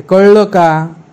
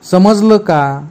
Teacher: समजलं या ल वर जो जोर आहे, दाब आहे